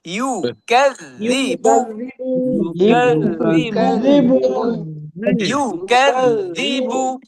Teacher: ইউ ঠোঁট গোল হবে এবং শেষের বা এটাও ঠোঁট গোল হবে, কারণ এখানে পেশ।